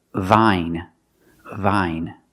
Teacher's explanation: the voice sound with the teeth, v, and the bottom lip, v. We make vibration. Also, the position is straight.